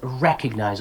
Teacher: Put that stress at the very beginning.